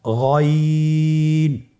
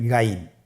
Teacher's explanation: গইন হরফটি উচ্চারিত হয় কণ্ঠনালীর শেষ ভাগ হতে। এখান থেকে উচ্চারণ করুন গইন।